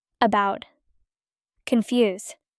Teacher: Unstressed vowel sound as in sofa.